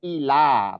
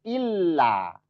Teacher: Tapi ini ditekan aja. Bedanya kan kalau nggak ditekan ila, tapi kalau ditekan karena ada tasdid jadi illa.